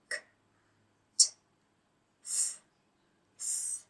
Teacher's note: A voiceless sound means that we do not use the vocal cords and so no sound emerges. If you put your hand on your throat here, you will not feel any vibration when you pronounce these sounds. · I can't feel a vibration under my hand, and it's just air coming out of my mouth. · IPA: /p/ /k/ /t/ /f/ /θ̼/